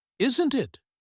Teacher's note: When the voice goes down on the tag question, "Isn't it?" with a falling tone, the speaker is fairly confident they are right. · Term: rising tone